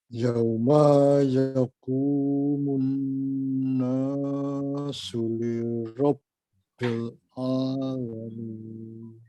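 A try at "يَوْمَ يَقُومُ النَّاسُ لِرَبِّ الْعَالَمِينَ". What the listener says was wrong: Satu saja Pak. Yaumanya dipendekkan kalau boleh. Ya, yauma yaqumun. Yauma yaqumun.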